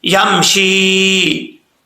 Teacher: یا ساکن سے پہلے زیر ہو تو یا مدہ ہوتا ہے، 1 الف کی مقدار اس کو لمبا کر کے پڑھیں گے